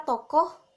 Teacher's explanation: Kata tokoh, bunyi O agak rendah, berada di belakang, dan berbentuk bulat